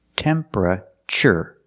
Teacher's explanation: The TU makes a ch sound like chicken.